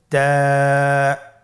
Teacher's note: তা হরফটি বারিক হরফ এবং এক আলিফ টেনে পড়তে হবে